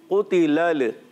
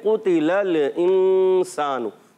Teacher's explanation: لام سے جب ملائیں گے لام کو ہلائیں گے نہیں